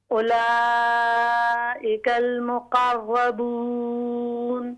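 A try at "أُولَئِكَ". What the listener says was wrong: ہاں جی اولا کی بجائے او. ہاں جو دمہ ہے نا یہ اور باریک کریں.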